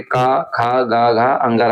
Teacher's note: जितने भी क वर्ग के वर्ण है इनका सबका उच्चारण स्थान कंठ होता है